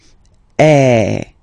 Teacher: the sound is really open and normally your mouth should be opened a little bit more